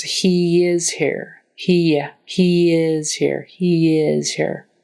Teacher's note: the first word ends in a long a e or I in that case it's joined more with a Y type sound